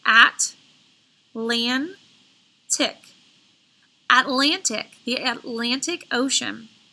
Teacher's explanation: when I say Atlantic, I put more emphasis in the middle. So that is the accented syllable.